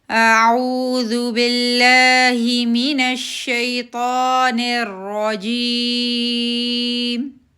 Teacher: اعوذ باللہ, اس کو نہیں کھینچنا, اونلی 2 کاؤنٹس